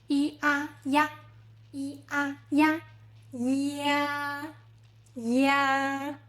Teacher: This is simply E combined with A. Start with E, lips spread, E, then open wide into A, ya. Think of the ya in English, yacht, but tenser.